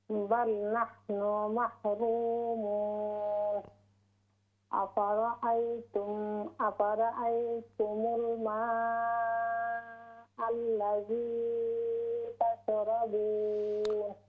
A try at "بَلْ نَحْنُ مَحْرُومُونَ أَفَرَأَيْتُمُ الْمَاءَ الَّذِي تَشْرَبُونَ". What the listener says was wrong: Yeah, we don't stretch that much the. أفرأيتم الماء الذي.